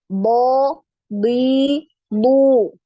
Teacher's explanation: huruf Dod ini tidak punya aliran udara atau aliran nafas · huruf Dod ini punya aliran suara jadi tidak punya aliran nafas tapi punya aliran suara